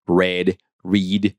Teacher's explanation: R is a retroflex sound